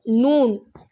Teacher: நுனி நாக்கு முன்பள்ளின் முன்னுள்ள முரசில் படும் பொழுது நூன் வெளியாகிறது